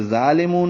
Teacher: یہ ظالمون ہے، موٹا ہوگا، اس کا کھڑا زبر بھی پر ہوگا. لام باریک ہے، و مدہ ہے، 2 حرکات لمبا کر دیں گے لیکن نون ساکن کر رہے ہیں تو 2 حرکات سے زیادہ لمبا کر سکتے ہیں.